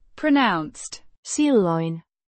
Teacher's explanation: pronounced silloin with the stress on the first syllable